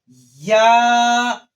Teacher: یہ زبان کے درمیان اور تالو کے درمیان سے ادا ہوتا ہے